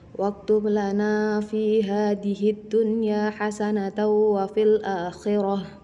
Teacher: Pada kalimat hadhihi dunya di sini dihukumi dengan bacaan idgham syamsiyah karena ada al-ta'rif bertemu dengan huruf dal dan cara membacanya juga melebur tanpa mendengung